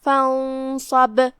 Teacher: فانصب، اور یہاں آخری میں حرف البا ہے، جو کہ ہم یہاں رکے تو ہم با پہ جزم سے رکے، لہذا با کا حکم ہوا قلقلہ، لہذا با کو ہلاتے ہوئے یہ کلمہ کو ادا کرنا ہے · دھیان رہے غنہ بھاری ہو کیونکہ صاد حروف التفخیم میں سے ہے